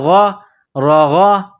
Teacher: غین، غین کے اوپر زبر ہے، غین کو موٹا کریں گے، انسان جس طرح گلے سے بلغم نکالتا ہے اسی طرح اس غین کو نکالیں گے